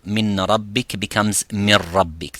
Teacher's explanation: min rabbik becomes mir rabbik, the Noon disappears completely. But for the Noon and the Mim, yes, it disappears, the Noon Sakina, but because there is another noon and meme, if it's joined with another noon and meme. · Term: complete idgham